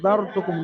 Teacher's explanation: জারতুকুম র সাকিনের পরে জালের উপরে জাওয়ার এসছে, রকে পুর করে পড়তে হবে। জারতুকুম, তায়ের উপরে পেশ, কাফের উপরে পেশ হারাকাত।